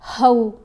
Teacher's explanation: یرضعن اولادہن، اب یہاں پر الف دیکھیں، الف کے اوپر زبر ہے، ساتھ واو ساکن ہے تو او آواز بنے گی، حرف لین ہے